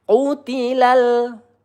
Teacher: lam sukun ya, di sini sifatnya tawassut, tidak boleh tertahan atau terlalu mengalir